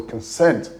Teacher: It's on the second syllable, so you have consent. The schwa sound in the first vowel and then sent that takes the stress.